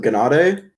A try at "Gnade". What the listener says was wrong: Not so much emphasis on the E, but yes, that was good.